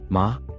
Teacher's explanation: Ma horse falling rising